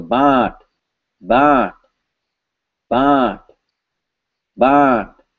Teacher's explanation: The dictionary says this is bond. It has a clear nasalized vowel.